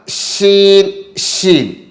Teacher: शीन इसका मखरज है जुबान के बीच और ऊपर का तालू